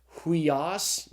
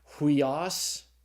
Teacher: Upsilon iota is pronounced we, as in sweet. And so the Greek word is pronounced huios. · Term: diphthong